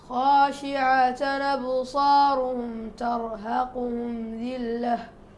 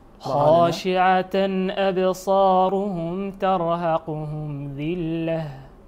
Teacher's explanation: نقل الهمز نقل حركة الهمز لنون التنوين